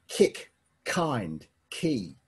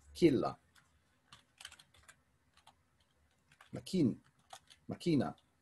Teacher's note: A K sound, a palatalized K, as if you're saying kick, kind, key. It's a qualitatively different sounding type of K.